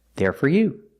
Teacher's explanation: Most of the time, for is not stressed, and for this reason it's pronounced fur with a short sound, like burger, fur, when it's not stressed.